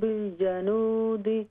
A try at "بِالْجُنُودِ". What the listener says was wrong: جنود نہیں ہے بالجنود جیم پر پیش ہے